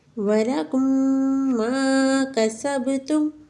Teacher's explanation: میم ساکن کے بعد دوسری میم آئی، یہاں پر بھی غنہ کیا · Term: ادغام شفوی